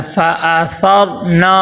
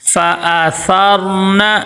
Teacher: نون کے اوپر زبر ہے، حرکات غیر مدہ میں سے ہے تو اس کو لمبا نہیں کرنا، فَآثَرْنَا ایسے لمبا نہیں کرنا، فَآثَرْنَ۔